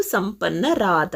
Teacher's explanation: ರು ಅಲ್ಲಿರ್ತಕ್ಕಂಥ ಉಕಾರ ಲೋಪ ಆಗಿ ಮುಂದೆ ಆ ಜೊತೆ ಸೇರಿಕೊಂಡಿದೆ, ರು ಹೋಗಿ ರಾ ಆಗಿದೆ ಅಷ್ಟೆ